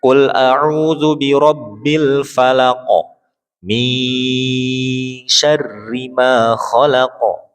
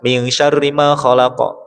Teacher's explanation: cara membacanya disamarkan dengan tempo gunah yang dipanjangkan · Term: ikhfa